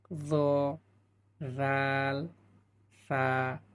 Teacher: 13 নম্বর মাখরাজে আসলাম, জিহ্বার আগা সামনের উপরের দুই দাঁতের আগার সঙ্গে লাগাইয়া 3টি হরফ উচ্চারিত হয়